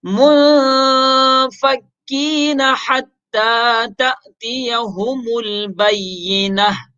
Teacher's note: منفکین میں ہم اخفا کر رہے ہیں, یعنی ناک میں اس کو پڑھتے ہیں. اس کی وجہ یہی ہے کہ نون ساکن کے بعد حروف حلقے میں سے کوئی حرف نہیں ہے, لہذا ہم منفکین میں اخفا کریں گے.